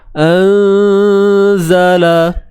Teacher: Lidah jangan keluar. Sebab ni huruf zai, bukan huruf zal.